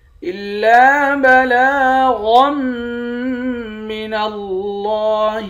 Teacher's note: لفظ اللہ کے لام کو موٹا پڑھیں گے۔ لفظ اللہ کے لام پر کھڑا زبر ہے، ایک الف کے مقدار کھینچ کر بھی پڑھیں گے۔